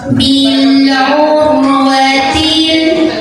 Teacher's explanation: Ra sukun dibaca secara tafkhim karena huruf sebelumnya dhammah, jadi tebal maka lidah naikkan.